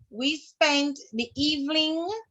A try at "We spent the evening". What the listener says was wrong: Jesus, it's not evening. There's no L in the word.